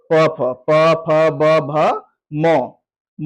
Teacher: म का जो उच्चारण स्थान होगा वो ओष्ठ होगा